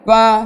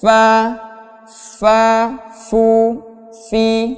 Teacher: anginnya keluar di antara dua gigi seri. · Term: huruf fa